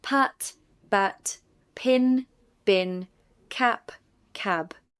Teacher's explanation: The difference is only voicing. The place and manner are the same.